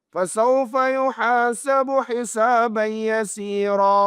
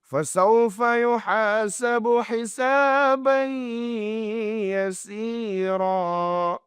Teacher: Maka ianya dianggap kurang tepat kerana kita meninggalkan dengung pada idgham maal-ghunnah.